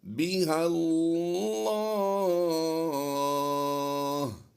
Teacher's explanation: لفظ اللہ کی لام کو ہم پر کر رہے ہیں، غور کیجئے گا کیوں پر کر رہے ہیں کہ یہ لام سے پہلے جو لام ہے یہ خالی، یہ بھی خالی ہے اور یہ الف بھی خالی۔